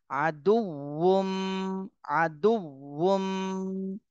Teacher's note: আচ্ছা, এখানে ওয়াও এর উচ্চারণটা একটু কঠিন মতো মনে হচ্ছে, কিন্তু ওয়াওটা উচ্চারণ করার সময় ঠোঁট গোল হয়ে যাবে, তাহলে উচ্চারণটা সঠিক হবে।